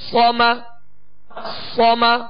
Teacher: صاد زبر صا، میم زبر ما، صما صما. صاد کو پر پڑھیں گے اور اس میں سیٹی کی آواز پیدا ہوگی